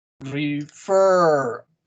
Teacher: La segunda sílaba está acentuada.